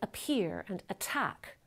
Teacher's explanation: the voiceless stop isn't the first sound in the word but it comes at the beginning of a stressed syllable so it gets aspirated